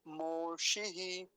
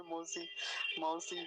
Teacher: और एक काम की बात और है, विसर्ग, मोशी ही ऐसा बोलेंगे मोशी ही, तो थोड़ा लंबा खींचेंगे, विसर्ग भी बोलेंगे, मूर्धन्य शकार का विशेष ध्यान रखेंगे, औकार नहीं बोलेंगे